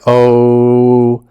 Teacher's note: If you stretch it out like o, you'll notice that it does become an oo sound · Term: long o sound